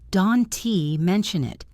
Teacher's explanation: And the T at the end of don't is usually stopped. Don't mention it.